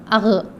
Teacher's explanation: اس کے بعد ہے غین، حلق کے اوپر کے حصے سے، یعنی کہ اوپر کا حصہ، حلق کے اوپر کے حصے سے آتا ہے